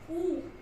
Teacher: ऊ निकल रहा है तो गोल हो रहा है, सर्कल बन रहा है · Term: व्रतामुखी स्वर